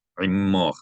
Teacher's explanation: you want to geminate the mem because there's a dagesh in the mem, so you want to hold down the mem a little longer than normal